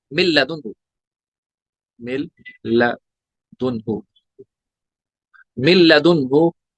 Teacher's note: यहाँ पे भी मीम नून लाम जेर मिल, ऐसे जैसे करना है, मीम नून लाम जेर मिल, लाम जबर ला, मिल लदुनहु। तो यहाँ भी नून का लाम में इदगाम हो गया, लेकिन विदाउट गुन्ना हो, विदाउट गुन्ना, गुन्ना नहीं हुआ, इदगाम बिला गुन्ना।